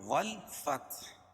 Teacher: وقف کی حالت میں ہا کے اوپر جو پیش ہے اس کو جزم سے بدل دیں گے